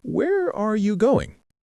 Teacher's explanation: with information questions, you know, the what, where, when, who, why, or how questions, your voice often goes down at the end